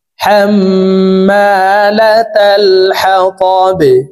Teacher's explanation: হাম, মিম আলিফ জবর মা, হাম্মা, লাম জবর লা, তা লাম জবর তাল, হাম্মালাতাল, হা জবর হা, ত জবর ত, হা ত, বা জের বি, হা ত বি, বাকে ওয়াকফের ক্ষেত্রে সাকিন করে ফেলবো। বা যেহেতু কলকলার হরফ নিচের দিকে ধাবিত করে ধাক্কা দিয়ে সাকিন করব। হাম্মালাতাল হাতাব, ওয়ামরাআতুহু হাম্মালাতাল হাতাব।